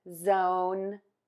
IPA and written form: zoʊn (ZONE)